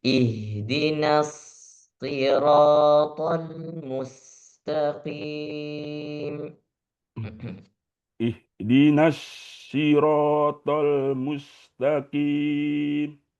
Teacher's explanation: Ditahan sedikit supaya soknya itu sempurna hamesnya. Ihdinas boleh dipanjangkan sedikit biar desisnya itu keluar.